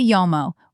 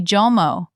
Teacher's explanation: it's a hard J like jump or jacket, not a Y sound. We don't say yomo, we say jomo.